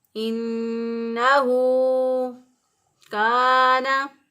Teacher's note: کاف کو باریک پڑھیں گے، اسی طرح الف کو ایک الف کے برابر لمبا کریں گے